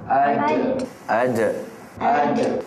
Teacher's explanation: dia nampak melantun tu itu dinamakan Qalqalah